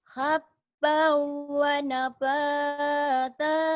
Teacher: Hukum nun mati atau tanwin berhadapan dengan waw idgham bi gunnah. Dimasukkan, diidghamkan, disertai dengan dengung.